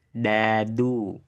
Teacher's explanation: Ini lagi di ini sekarang mau coba di dibikin tah kayak gini huruf dal keluar dari ujung lidah yang yang menyentuh tempat tumbuh gigi dari atas. Coba ucapkan dadu dengan suara tipis. Rasakan ujung lidahmu menyentuh tempat tumbuh gigi atas.